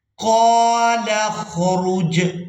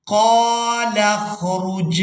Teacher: لام کو خا ساکن کے ساتھ ملائیں گے۔ یہاں پر جو الف ہے یہ سائلنٹ ہی رہے گا، اس کو ہم نے ادا نہیں کرنا۔